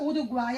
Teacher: a palavra uruguai é um tritongo porque ficam três vogais na mesma sílaba